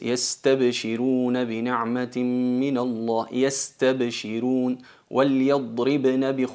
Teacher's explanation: notáis que el lam es menos largo, el dad es con rejawa y el ba es con shidda, se corta el sonido